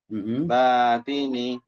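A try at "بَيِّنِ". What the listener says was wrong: Bayini. Titiknya di bawah.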